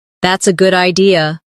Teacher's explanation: Notice how their voice rises at the end.